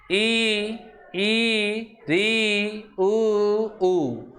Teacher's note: ऐसे स्वर जिनके उच्चारण में मुख द्वार केवल 25% मतलब आधे से भी कम खुलता है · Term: समवृत्त स्वर